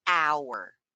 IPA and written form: aʊr (OUR)